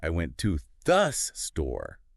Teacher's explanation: the main meaning is in went and store. So those get the stress, right? The little words to andthe, they become really weak and quick like t and the.